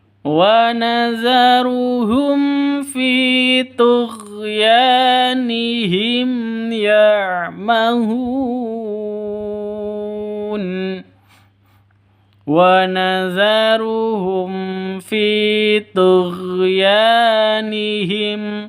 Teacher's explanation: Wa nazaruhum pendek semua ya, jangan dipanjangkan.